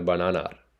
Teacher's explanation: So it's almost like a R sound, the letter R at the end of the A.